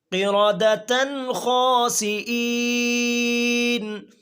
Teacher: یہاں پر گول تا پر تنوین ہے، نون تنوین کے بعد حروف حلقیہ میں سے ایک حرف خا ہے، اس لیے غنہ نہیں کریں گے۔ قِرَدَةً خَاسِئِينَ، غنے کے بغیر پڑھیں گے۔